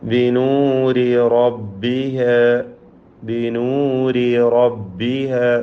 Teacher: രണ്ട് റാ തുടരെയായി വരുന്നു. ആദ്യത്തേത് തർക്കീഖും രണ്ടാമത്തേതിന് തഫ്ഖീമും.